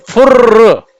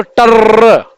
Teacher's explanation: तो हम जब फुर्र लिखते हैं तो फुर्र लास्ट में जो रा है ये लंबा खींच रहा है, तो फुर्र। इस तरीके से मेढक करता है टर्र, टर हमने लिखा तो टर्र। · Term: प्लुत स्वर